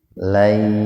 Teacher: Lai idgham bigunna, nun mati ketemu ya, jadi membacanya diidghamkan. Diidghamkan itu dimasukkan ke huruf ya dengan bigunna, dengan mendengung.